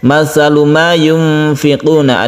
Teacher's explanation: Artinya samar itu adalah dibaca antara izhar dan idgham. Jadi nunnya ini tidak begitu jelas, dia disamarkan suaranya karena menghadapi huruf fa. Dan cara menyamarkan yaitu ketika kita membaca nun, kita itu bersiap membaca huruf fa. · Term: ikhfa hakiki